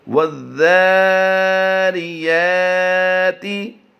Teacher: ذال حروف شمسی سے ہے، اس سے پہلے لام جو لکھا گیا ہے اس کو ہم نہیں پڑھ رہے، اس سے پہلے الف جو ہے اس کو بھی ہم ادا نہیں کر رہے، نہ ہجوں میں پڑھیں گے نہ رواں پڑھیں گے۔